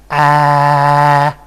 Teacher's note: the tongue is extremely low and has a very much front quality, the most front quality, and the result would be something like ah.